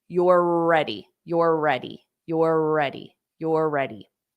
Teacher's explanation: you just hold your mouth in that R but then you have to say the r again for the next word so you are pronouncing it twice but you're just doing it